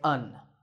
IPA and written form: ən (an)